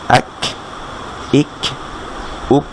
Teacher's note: কাফে একটা sound বের হবে, অর্থাৎ সামান্য একটু বাতাস বের হবে এক। তারপরে হামজার নিচে কাসরা দিয়ে ই গিয়ে কাফকে যদি ধরে ইক, হামজার উপরে দম্মা দিয়ে উ গিয়ে কাফকে ধরলে উক। · জিহ্বার গোড়ার একটু সামনের দিকের অংশ, তালুর শেষ অংশের যে নরম জায়গাটা শুরু হয়েছে ঠিক সেখানে লাগবে, সেখানে লেগে ক্যাফ উচ্চারণতে হবে। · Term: মাখরাজ